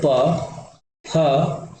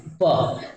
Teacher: जब तक आपका मुह बंद है तब तक हवा रुका हुआ जैसे ही हवा निकलेगा तब कहीं जाके आप बोल पाओगे ठीक है हवा रुक जाती है अवरोध व्यंजन में प बोल